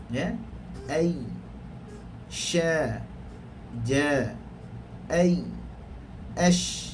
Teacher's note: Yang ketujuh, pertengahan lidah serta membetuli langit-langit. Maknanya tengah-tengah lidah betul-betul kena langit atas. Keluar padanya tiga huruf, ya, shin dan jim.